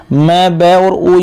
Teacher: जो अ है ये ओष्ठय नहीं है। म, ब और ऊ क्या होते हैं? ओष्ठय होते हैं।